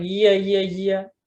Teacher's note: you could have part at the back of the tongue interacting with the hard palate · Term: palatal sounds